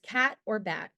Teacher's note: Short A is a near open front unrounded vowel. The sound is produced with the tongue in low and in front in the mouth with the jaw relatively open. The short vowel A makes the ah sound as in the middle of the words cat or bat or the beginning of the word apple.